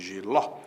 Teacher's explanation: a sílaba tônica é a última a palavra é oxítona